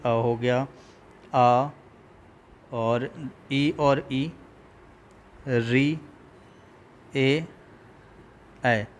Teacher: ओष्ठ जो है आपका ओष्ठ गोल नहीं होता है, ओष्ठ गोल नहीं होता है। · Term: अवृत्त मुखी